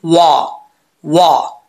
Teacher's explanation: होंठ गोल होंगे तो वाव पढ़ा जाएगा